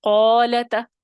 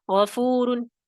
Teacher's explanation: جب حروف مستعلیہ مضموم ہوں گے، ضمہ کی علامت ہوگی، تو یہ تیسرا درجہ ہے تفخیم کا. اس وقت اس میں تیسرے درجے کی تفخیم ہوگی.